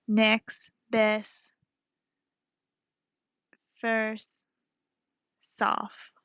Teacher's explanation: And then there's T dropping, instead of next, best, T, soft, um, uh, for soft, sorry, it would be next, best, first, soft. So you see how I wasn't pronouncing the T.